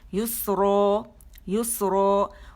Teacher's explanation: ہم اس پہ وقف کرتے ہیں تو پھر مد عوض بن جاتی ہے، ٹھیک ہے، اور 2 کاؤنٹ تک اسے کھینچا جاتا ہے